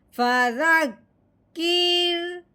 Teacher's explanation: اب کاف کے نیچے زیر ہے، رو جزم والا ہے، تو یعنی جو جزم والا حرف ہوتا ہے وہ پچھلے والے کو اپنے ساتھ ملاتا ہے۔ اب کاف کو ہم نے رو کے ساتھ ملانا ہے لیکن رو کو باریک کرتے ہوئے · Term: رو باریک